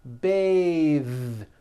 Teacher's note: when you change it into a verb, to bathe, the vowel changes to an A sound and the TH is voiced. Bathe, like in bathing suit.